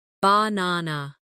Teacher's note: in the word banana, the stress is on the second syllable, banana. If you put the stress in the wrong place, it can sound strange even if your pronunciation of the letters is correct.